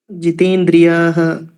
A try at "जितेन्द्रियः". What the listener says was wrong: जितेन्द्रियः याह न यः याह इति न यः दीर्घ नहीं है देखिए आराम